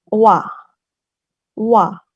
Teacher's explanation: bunyi W di bahasa Korea itu, berasal dari gabungan vokal dan vokal.